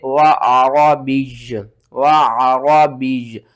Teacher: وقف کی صورت میں دو پیش ختم ہو جائیں گی تو آپ نے کیا کرنا ہے، یا کو ساکن کر دینا ہے